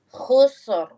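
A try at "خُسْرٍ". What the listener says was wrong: Nah, ini lumayan, tapi kurang tebal masih. Khusru, tebal tuh. Khusru.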